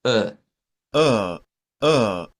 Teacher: es una vocal centralizada · Para escucharla o para articularla, basta con que hagamos uh, boca entreabierta y solo hacemos una pequeña vibración, como pujar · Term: sonido ishba